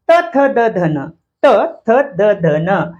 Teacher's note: त्याच्यानंतर जिभेचा शेंडा दाताला लागतो, पुढच्या दातांना. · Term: दंत्य